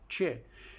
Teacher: the ch sound is a combination of te and she